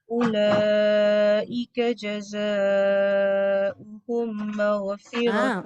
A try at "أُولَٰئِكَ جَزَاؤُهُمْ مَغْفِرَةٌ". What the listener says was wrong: Apa hukum mim dengan mim? Tapi tak bunyi. Dengungnya tak cukup.